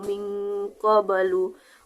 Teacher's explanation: Pada kata min qabli itu adalah qalqalah sugro atau pantulan yang ringan yang berada di tengah kalimat.